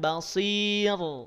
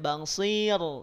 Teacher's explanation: Jadi, ra-nya tidak ditebalkan